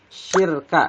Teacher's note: ro-nya dibaca tipis karena ro berharokat sukun dan sebelumnya kasroh